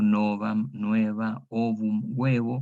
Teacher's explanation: una O tónica abierta diptonga en UE